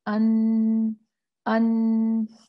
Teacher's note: نون کی زبان کی نوک جو ہے اور اس کے ساتھ جڑے ہوئے سامنے کے دانتوں کے مسوڑوں سے ادا ہوتا ہے، لام کے مخرج سے تھوڑا سا پیچھے۔ تو لام کے مخرج کے تھوڑا سا پیچھے جو ہے وہ جو ہے اس طرف لام ذرا تھوڑا اوپر ہوتا ہے، نون اس طرح ہوتا ہے نیچے، تو تھوڑا سا نیچے جو ہے وہ نون جو ہے ادا ہوتا ہے، ان ان۔